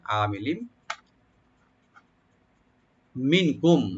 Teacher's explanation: তাহলে আমিলিন আইনটাকে ওপেন করে একালে টানবেন, মি বলবো, আর লামে যে তানবিন আছে এই তানবিনটা মিমের সাথে মিশবে, এখানে এখানে ইদগাম উইথ গুন্না হবে, yani গুন্না সহকারে সংযোগ করবো আমরা